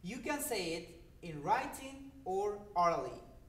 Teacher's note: the rising intonation is for the first alternative, but in the last alternative, it's given the rising-falling pattern